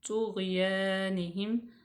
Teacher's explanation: یا ساکن سے پہلے زیر ہے، اس کو لمبا کریں گے